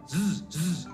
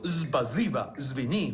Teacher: las personas que viven en el norte y el centro de Rusia, la S es mucho más fuerte. Tiene más intensidad.